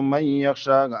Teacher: من یخشا نون ساکن دی ورسته د يرملون حروف نه یا راغلی ده نو دلته ادغام کیږي